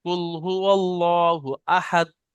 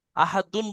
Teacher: আহাদুন বললে হবে না, আপনার দাঁড়াতে গেলে আহাদ পড়তে হবে, সাকিন করতে হবে